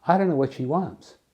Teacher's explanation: the boundary between what and she disappears completely